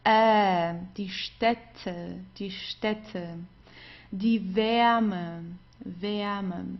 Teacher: it's like an open E. It's a mix of E, a mix between E and A.